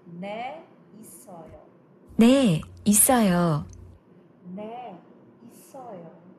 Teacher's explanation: you have to pause after 네, a little bit of, you know, stop, and then 있어요